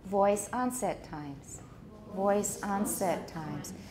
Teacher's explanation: onset gets a tonic stress that's why it's higher